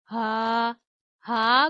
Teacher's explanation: हा गले के आखिरी हिस्से से अदा किया जाता है।